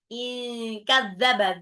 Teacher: nun sukun ketemu Kaf itu adalah ikhfa in kadzaba dalalnya itu dalalnya ujung lidah ya bertemu dengan gigi